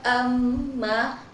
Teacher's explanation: Di sini pada lafaz amma itu terdapat hukum ghunah musyaddadah karena mim bertasydid sehingga dibaca dengung dua harakat